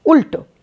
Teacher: তাহলে এই ল টা হচ্ছে মূর্ধন্য ল মূর্ধা দিয়ে আমি একে উচ্চারণ করলাম অর্থাৎ আমার জিউহা মূর্ধাকে স্পর্শ করে এই ল কে উচ্চারণ করল